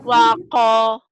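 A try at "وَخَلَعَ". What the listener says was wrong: ini bukan ko, kho. Wa khola'a.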